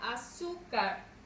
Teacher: mayor fuerza de voz en la penúltima sílaba y termine en una consonante R.